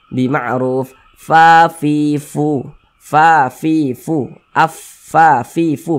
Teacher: ketika kita mengucapkan huruf Fa itu ada nafas yang mengalir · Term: sifat Hamas, sifat hamas